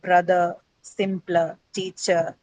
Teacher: this ER suffix that you add to teacher is basically the schwa sound